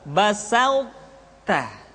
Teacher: sifat itbaq yang dimiliki oleh huruf th masih tetap ada. Sehingga ketika mengucapkan ee th bertemu dengan ta terdengar suara yang menebal basut ta.